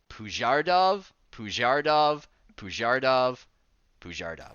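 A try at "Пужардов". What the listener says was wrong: Pujardov. Except it's Russian, so the ooh almost sounds like an ah. Pujardov. Pujardov. It's like a soft A, hate fucked a lowercase u. Pujardov.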